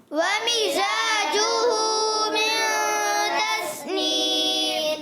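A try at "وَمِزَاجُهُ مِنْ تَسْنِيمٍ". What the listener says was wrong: ومزاجہ، زا کو پڑھنا ہے وہ ذال، ذال نہیں پڑھنا، زا پڑھنا ہے۔ کیا پڑھنا ہے؟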